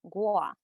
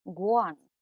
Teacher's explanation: in hokkien me or i is gua when it's nasalized guan that means we in plural forms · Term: nasalization